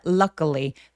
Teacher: 여기 제가 밑줄 쳐 놓은 이유는 강세 뒤에 오는 크트프 소리들이 살짝 된 소리를 내기도 해요.